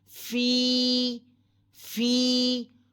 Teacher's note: یا ساکن سے پہلے زیر ہے، ایک الف کے برابر کھینچیں، لمبا کریں